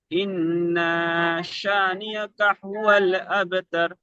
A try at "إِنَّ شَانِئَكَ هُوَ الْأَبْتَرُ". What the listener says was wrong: ইন না বলে টান হয়ে যাচ্ছে। এই নুন, নুনের উপরে জাবার আছে, জাবারটি তাড়াতাড়ি পড়তে হবে। ইন না শানিআকা হুয়াল আবতার। হ্যাঁ, গুণনাটা হবে অবশ্যই।